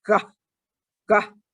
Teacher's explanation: So I tell them to pay attention to where their tongue is when they're saying gah, gah at the beginning. Like here, back of the tongue going up, blocking the airflow.